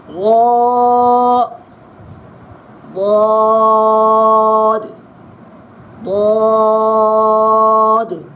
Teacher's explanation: یہ ضاد حرف مستعلیہ میں سے ہے، اس کو پر پڑھنا ہے